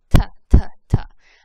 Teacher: I'm actually making my tongue touch the top roof of my mouth where my front teeth are.